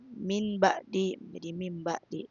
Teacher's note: Pengertian iklab ketika nun sukun bertemu dengan huruf ba, maka nun sukun diubah menjadi suara mim dan dibaca dengan suara nasal guna